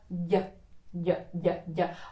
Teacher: The Y. Yeah, so the middle of the tongue gets up and the tip gets down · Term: soft D